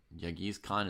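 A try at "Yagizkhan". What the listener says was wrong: G is silent. Yay.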